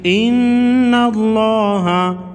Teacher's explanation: الذین قالوا ان اللہ، نون مشدد پر غنہ ہوگا، لفظ اللہ کے لام کو موٹا پڑھیں گے اس لیے کہ نون اس سے پہلے حرف نون پر زبر ہے۔